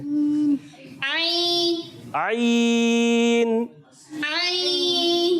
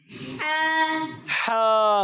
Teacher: حلق کے درمیان والے حصے سے ادا ہوتا ہے